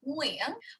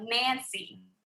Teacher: So the NG Vietnamese is back of your throat. So you should feel it back there like Nguyen, whereas the N in English is on the tip of your tongue